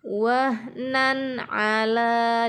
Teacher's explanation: letaknya tanwin bertemu dengan huruf ain, dibaca izhar atau jelas.